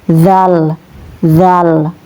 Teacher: Huruf zal ini ya keluar pada ujung lidah dengan bibir atas